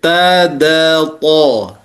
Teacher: lisan kita itu bertemu dengan tempat tumbuhnya gigi seri. Nah inilah tempat keluarnya 3 huruf yaitu ta, da, to.